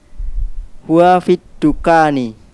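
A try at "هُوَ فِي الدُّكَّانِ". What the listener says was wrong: Huwa fit dukani. Sahih.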